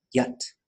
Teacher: this is one that will always be Y, high tone A, T. It can't go long, can't go low. It will always be yet.